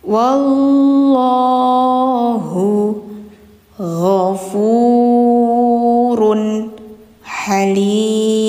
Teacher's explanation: Kalau ini tanwin setelahnya ada ha. Ini jelas n-nya run ha jelas karena ini izhar bukan idgham.